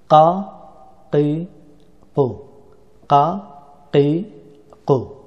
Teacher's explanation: কাফকে জিহ্বার একেবারে শেষের অংশ থেকে উচ্চারণ করতে হয়।